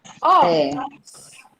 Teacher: É a sílaba tônica, é o ó.